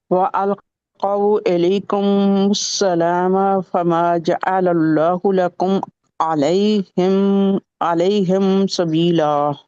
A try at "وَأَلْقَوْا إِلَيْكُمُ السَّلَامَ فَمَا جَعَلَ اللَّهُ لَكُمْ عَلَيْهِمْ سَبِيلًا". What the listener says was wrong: سبیلا، لا کیوں موٹا کر دیا آپ نے؟ لا تو نہیں ہے نا، لام ویسے تو موٹا ہوتا، اس کی کنڈیشن ہے موٹا ہونے کی، صرف